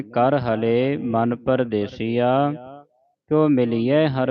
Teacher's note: ਲਾਉਣਾ ਜਿਹੜਾ ਕਰ ਹਲੇ ਪਾਠ ਹੈ ਇਹ ਪੋਲਾ ਹੈ। ਧਿਆਨ ਰੱਖਣਾ ਕਰ ਹਲੇ ਨਹੀਂ ਪੜ੍ਹ ਦੇਣਾ ਅਧਕ ਲਾ ਕੇ ਉਚਾਰਨ ਨਹੀਂ ਕਰਨਾ